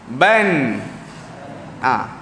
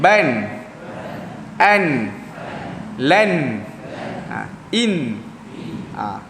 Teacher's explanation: Bila huruf nun ni dia mati, dia jadi makhrajnya bunyi kat hidung. Ban. Dia tak ada kat mulut dah keluar. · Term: Bunyi dengung